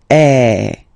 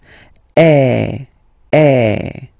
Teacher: the sound is really open, and normally your mouth should be opened a little bit more than with the accent aigu as well